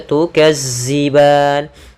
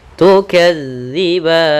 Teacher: Jangan diganti dengan huruf zai tapi dia dza yaitu ujung lidah kita menempel dengan gigi dari atas